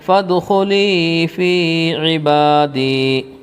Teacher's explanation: یا ساکن سے پہلے زیر ہے اس لیے یا مدہ ہوگا، تھوڑا کھینچ کر پڑھیں گے۔ اس میں بھی وہی ہے، یا ساکن سے پہلے زیر، اور با کے اوپر کھڑا زبر ہے، کھڑا زبر برابر ہوتا ہے الف مدہ کے، یا ساکن سے پہلے زیر ہے اس لیے یا مدہ ہوگا، تھوڑا کھینچ کر پڑھیں گے۔